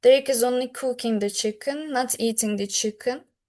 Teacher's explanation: I stressed the word cooking. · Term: contrastive stress